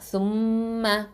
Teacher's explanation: மீம் முஷத்ததாங்கிறதுனால அதை நம்ம அக்கமல் குன்னா கொடுக்கணும்